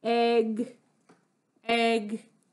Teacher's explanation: keeping that tongue up in back at the end of the word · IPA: /g/